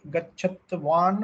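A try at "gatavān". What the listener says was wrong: Gachatvan sounds like terrible, so it is should be simple like Gatavan. So Panini will have some prakriya where he simplifies the form.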